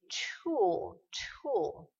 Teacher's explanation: on a encore ici ce petit t aspiré